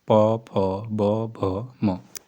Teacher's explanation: दोनों होठों को मिलाकर किया जाता है, ओष्ठ व्यंजन कहलाते हैं।